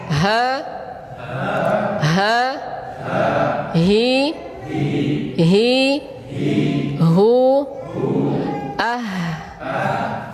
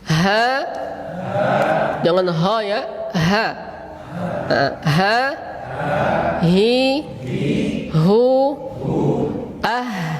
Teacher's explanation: perhatikan huruf H itu keluarnya dari aqsal halq, bukan di apa? Di dada.